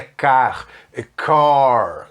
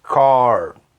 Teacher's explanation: Tem que encher a boca para falar esse R aí, né? Dobrar a língua para trás, ok? Car.